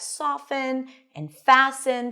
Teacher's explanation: the t was no longer pronounced.